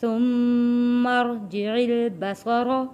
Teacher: ثم را یہاں پہ موٹا پڑھیں گے، آواز کو یہاں پہ بھاری رکھیں گے۔